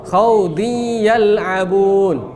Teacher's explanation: Nah, harus di-stay dari hidung, gunnah. Tanwinnya hilang, masuk melebur ke huruf ya, tapi dengan dengung. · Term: idgham bigunnah